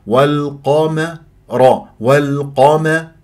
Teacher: القاف مفخمه مرتبه ثانيه مفتوحه ولا اكور الشفاه